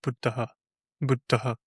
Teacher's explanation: Maybe I don't know if you want to get into cases, but the nominative case ending in the masculine is it's this schwa with a puff of air, which is called a visarga